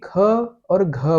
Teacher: ख और घ बोलेंगे तो ज्यादा हवा निकलेगी। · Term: महाप्राण